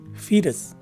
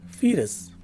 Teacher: The phonetic spelling would tell us that the stress is right in the beginning of the word. The letter E is a long E, as indicated by the macron sign on top of it.